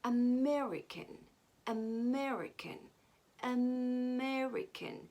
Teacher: we stressed again the first syllable and made the rest of the syllables weak